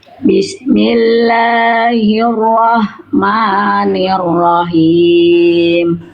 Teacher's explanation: La dan ma-nya jangan kepanjangan. La dan ma-nya di sini di basmalah cukup dua harokat aja.